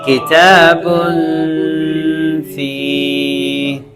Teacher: اخفا تھوڑا سا ناک میں لے جا کے کرنا ہے